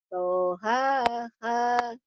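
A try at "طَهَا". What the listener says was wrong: H gedenya belum keluar.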